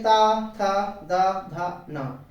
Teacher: और ता वर्ग में ता, था, दा, धा, ना, है ना, इनके उच्चारण करते समय जिह्वा स्पर्श करती है दांतों को, इसलिए इसको दंत कहते हैं।